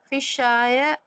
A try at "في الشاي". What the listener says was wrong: ஏன் في الشاي சொன்னீங்க? ஏன் யாவுக்கு ஃபத்தா செஞ்சீங்க? என்ன செய்யணும் யாவுக்கு? ஏன்? ஃபீ வந்திருக்கு. ஹர்ஃபு ஜர். ஃபிஷாயி.